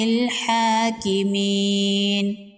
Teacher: کھڑی زبر ہے، ایک الف کے برابر کھینچ کے پڑھیں گے